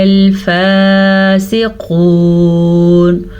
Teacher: قاف کو موٹا پڑھیں گے، وقف کا نشان آ گیا تو ہم یہاں پہ وقف کرنے کی وجہ سے نون کو بھی ساکن کر دیں گے